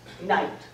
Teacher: Shakespeare says night. No K, no GH, and he changes the vowel.